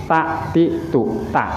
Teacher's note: Ta itu ujung lidah berada di belakang gusi gigi atas, menempel pada gusi gigi atasnya.